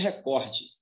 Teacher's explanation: A sílaba mais forte é o có.